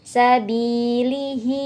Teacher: karena ada harakat kasrah Bi diikuti Ya Sukun dibaca panjang dua ketukan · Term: Mad thi'i